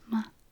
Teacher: But there is another way of saying ma, just ma, almost no tone at all.